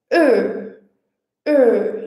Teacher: vai pronunciar um E, mas com o lábio completamente arredondado e quase fechado. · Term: schwa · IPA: /ə/